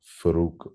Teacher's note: with a geminate F at the beginning of a word